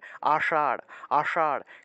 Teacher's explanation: উপরের অংশটা হলো তালু আর তালুর পিছনের অংশটা হলো মূর্ধা তা আমরা জীবভাগকে উল্টিয়ে মূর্ধা স্পর্শ করিয়ে স উচ্চারণ করতে হবে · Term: মূর্ধন্য